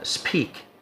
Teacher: So the pah here is initial, and the sah is pre-initial.